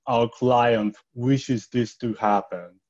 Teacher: a lot of glottals and sort of mucus in the throat as they say these words